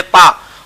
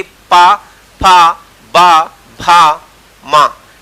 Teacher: जैसे ही हमने होठ खोले पूरी वायु एक साथ बाहर निकली और उच्चरित हुए ओष्ठ वाले वर्ण